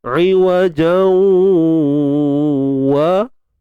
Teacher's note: Idgham bi gunnah, masuk idgham, masukkan bunyi tanwin ke dalam waw. Bila kata bi gunnah ni, masuk tu dengan dengung, dan dengungnya berkadar dua harakat sahaja.